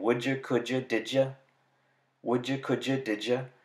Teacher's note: If you look about halfway between these two sounds, you'll see another one that you should recognize, the j sound, which when combined with the alveolar stop d makes the affricate j